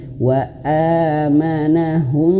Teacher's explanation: wa ini panjang ya, karena a-nya berwarna ada alif, 2 harokat, dan di sini dihadirkan warna biru ya.